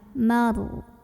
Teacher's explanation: Ada ra tafkhim karena ada ra sukun sebelumnya fathah. Cara membacanya ditebalkan. Maru. Diangkat pangkal lidah kita.